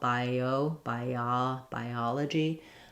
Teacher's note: when I move from front vowel to a non-front vowel, bio, bia, biology, I'm going to have that y sound coming in just naturally as I slide and connect those vowels.